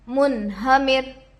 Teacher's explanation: نون ساکن کے بعد حروف حلقی سے ہا آ کر ہے، اس لیے نون کو ظاہر کر کے بلا غنہ کے جلد پڑھیں گے. اس کو اظہار کہتے ہیں.